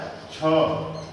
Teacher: तो देखो छ में वायु अधिक लग रही है। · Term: महाप्राण